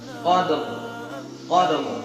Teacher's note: Ra-nya ini tafkhim, tebal. Qadr, qadr, cepat.